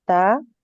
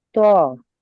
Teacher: ता और त्वा, ये है कि ता जो है वो बारीक आवाज से निकलता है, और जो त्वा है वो जुबान जो है वो ऊपर हो जाती है उससे। जुबान की जड़ को ऊपर तालू की तरफ जब उठाकर मोटी आवाज से पढ़ेंगे।